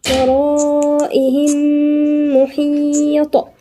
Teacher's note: ميم وميم يبقى إدغام مثلين صغير